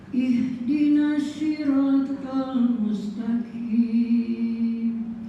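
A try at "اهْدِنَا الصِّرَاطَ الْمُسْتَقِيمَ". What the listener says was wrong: Nah, hati-hati soknya dia pakai shin, nasi. Sod, si. Jangan takim tapi taqi. Pakai Q, O, P.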